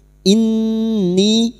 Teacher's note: nun yang bertasdid ghunah musyaddadah Kita dengungkan selama tiga harakat. Dan ini adalah dengungan yang paling kuat